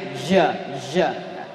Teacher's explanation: Jim tengah lisan, hurufnya tegas, ja ya. Jangan sampai seperti G bahasa Inggris, ja. Ja, tegas.